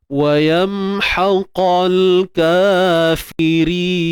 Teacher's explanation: Ra kita kena nipiskan kerana ia berbaris bawah.